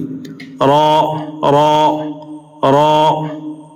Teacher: നൂൻ, നൂൻ, ന, നി, നു. അടുത്ത അക്ഷരം റോ ആണ്. നാവിൻ്റെ തലയുടെ മുതുകും മേലെ മുൻപല്ലുകളുടെ ഊനും.